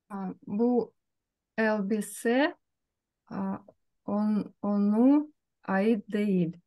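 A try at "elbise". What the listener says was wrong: Да, бу эльбисе, только эльбисе, мягко. Не эльбисе, а у нас правило, что после мягких гласных ле у нас идет с мягким знаком. Бу эльбисе, она айди.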